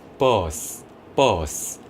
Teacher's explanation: bus, bus 할 때는요, 앞에 있는 뻐가 조금 더 짧아지고요.